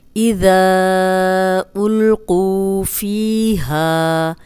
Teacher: زال کو ہم نرم پڑھیں گے، سیٹی کی آواز نہیں آئے گی، اوپر سامنے کے جو 2 دانت ہیں ان کے اندرونی کنارے پہ زبان رکھ کے ادا کریں، اور ذا کے آگے حمزہ آ گیا ہے تو ہم اس کو 4 حرکات لمبا کریں گے۔